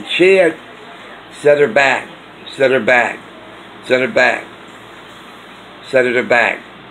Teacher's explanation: it's hard on the ear to make out the k sound at the end